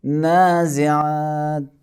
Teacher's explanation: نون کے بعد الف آیا ہے اور نون حروف استعلاء میں سے نہیں، اسی لیے اس کو باریک ادا کریں گے